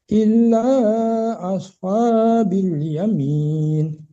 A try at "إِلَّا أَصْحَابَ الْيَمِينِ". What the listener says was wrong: Bal. Oh, bil lagi bal, Pak. Bal bukan bil. Bal, bukan bil.